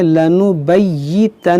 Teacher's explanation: یا مشدد ہے نون مشدد ہے، دونوں کو پڑھیں گے دو بار. کیسے پڑھیں گے لنبیتنہ، دیکھیں دونوں ڈبل ہو گیا، لنبیتنہ اس طرح.